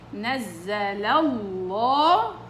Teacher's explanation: اتكاء خفيف على اخر اللام الاولى اخر الفتحة، بعدين روحي ادخلي تفخيم لامات